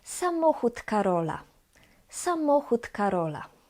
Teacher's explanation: The D at the end of the word samochód is pronounced as T. T. So samochód Karola.